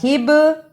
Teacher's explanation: یہ حرف قلقلہ ہے، اس کو ہلا کر پڑھنا ہے، قاف طا با جیم دال، جزم کی صورت میں حروف قلقلہ ہیں، یعنی ان حروف کو ہلا کر پڑھا جاتا ہے۔